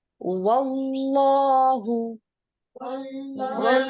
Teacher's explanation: زبر کے بعد اللہ کا نام پر کر کے پڑھیں گے، کھڑی زبر کی وجہ سے اس کو 2 حرکات تک لمبا کریں گے لام کو۔